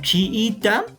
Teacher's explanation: en chiita no se separan porque son vocales abiertas sino que se separan porque son vocales cerradas pero son idénticas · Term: yato simple